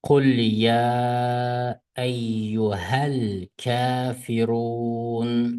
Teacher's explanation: Kafirun, ru buni 2, 4, 6 harf miqdori so'zlaq bo'ldi. Chunki bu madda jaiz. Yani jaiz so'zish jaiz bo'lgan madda.